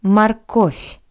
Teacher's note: The voice softened consonant V at the end of this word sounds like a paired voiceless consonant F.